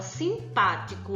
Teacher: a sílaba pá é a sílaba tônica, é a mais forte. Então, ela é chamada de proparoxítona.